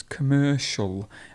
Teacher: So the C sound becomes a sh sound · we've got a schwa at the beginning